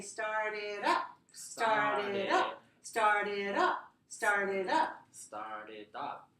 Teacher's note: Because this is a two-word verb. It's stressed on the second word.